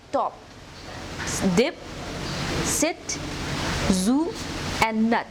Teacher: sounds formed with the front part of the tongue on the alveolar ridge, which is the rough bony ridge immediately behind and above the front teeth. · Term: alveolars